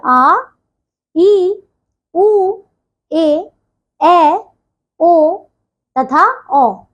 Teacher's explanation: इनके उच्चारण में ह्रस्व स्वर से दुगना समय लगता है। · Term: दीर्घ स्वर